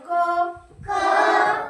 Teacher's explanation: क चा जेव्हा आपण उच्चार करतो तर तेव्हा तुम्हाला काय ऐकायला येते त्याच्यामध्ये अ ऐकायला येतो बघा म्हणा क तर त्याच्या शेवटी पहा अ ऐकायला येतो क